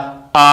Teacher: विवृत स्वर में हमारा मुंह उस सबसे ज्यादा खुलता है और विवृत स्वर के अंतर्गत हमारा आ अक्षर आता है।